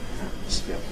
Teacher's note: I have a careful variant, atmosphere, but I don't normally say atmosphere with nasal release noise. I normally say atmosphere with a glottal stop. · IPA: [ˈæʔməsfɪə]